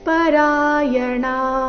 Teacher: ಮೃತ್ಯುಂ ಶ್ರುತಿ ಪರಾಯಣಾಹ ಮೃತ್ಯುಂ ಶ್ರುತಿ ಪರಾಯಣಾಹ ಇಲ್ಲಿ ಪರಾಯಣಹ ಈ ರೀತಿ ಬೇಡ ಣ ದೀರ್ಘ ಹೇಳಿ ನಂತರ ವಿಸರ್ಗದ ಉಚ್ಚಾರಣೆ ಹೇಳಬೇಕು